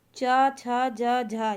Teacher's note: च, छ, ज, झ, ये स्पर्श संघर्षी वर्ण होते हैं